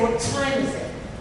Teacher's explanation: We don't release the T, the tongue from the T when we say the what.